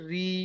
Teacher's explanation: র কে বারিক করে পড়তে হবে, অর্থাৎ মুখকে লম্বা করে পড়তে হবে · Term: র বারিক